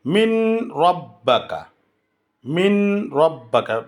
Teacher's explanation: তারপরে নুন সাকিনের পরে র আসলে ঈদগামে বেগাইরি গুন্না, গুন্না ছাড়া ঈদগাম করতে হবে। যেমন মিম নুনজের মিন, র বা জবর রব, মিন রব বা কাহ, মিম নুনজের মিন, এটা নুন সাকিন, তারপরে র আসছে মিন রব্বাকা, মিন রব্বাকা, বেগাইরি গুন্না, গুন্না ছাড়া ঈদগাম।